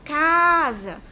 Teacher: Percebam como o K ficou mais prolongado. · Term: sílaba tônica